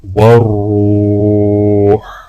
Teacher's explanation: را کو واو کے ساتھ ملاتے ہوئے ایک الف کے برابر کھینچیں گے